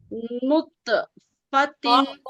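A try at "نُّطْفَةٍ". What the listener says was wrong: मोटा करना, नुत नहीं, नुप्पो, नून नून मोटा हराब का, ठीक है।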